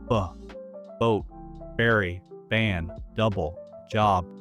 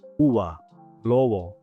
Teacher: In Spanish, however, especially at normal conversational speed, the B sound often becomes softer. The lips might not close completely, or they touch very lightly without that buildup of pressure and pop.